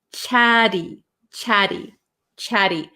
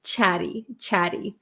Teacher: it's going to sound like a kind of soft D sound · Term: flap